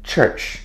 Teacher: the plosive T and the fricative SH, and the sound is CH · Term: affricate